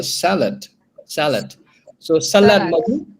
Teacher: So the stress is in the first syllable.